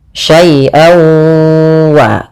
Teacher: suara tanwinnya masuk kepada huruf wau. Jadi, awalnya syaian ketemu wau dibaca syai wa syai waa.